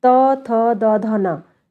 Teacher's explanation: जीभ की नोक ऊपर दांतों को स्पर्श करती है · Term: दंत व्यंजन